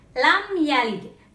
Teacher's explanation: Mim mati bertemu dengan salah satu huruf hijaiyah, yaitu ya. Maka dibacanya tidak berdengung. Dibacanya langsung.